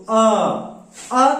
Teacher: अ का जब उच्चारण करते हैं तो इसका उच्चारण करते समय जीभ का मध्य भाग काम करता है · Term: मध्य स्वर